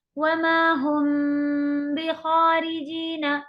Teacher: मीम की आवाज को बा की तरफ छुपाते हुए पढ़ेंगे। असल में मीम और बा दोनों ही हुरूफ होठों के हैं, تو اتنا خاص چھپانا اس کے اندر نہیں ہمیں سمجھ میں آتا، لیکن بس آپ یہ کہہ لیں کہ غنہ کر کے پڑھیں گے تب بھی آپ کا یہ صحیح ادا ہو جاتا ہے. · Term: इख्फा शफवी